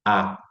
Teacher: A sílaba ran não pode ter esse A aqui, porque esse A, ele é um A aberto, é o A que a gente fala assim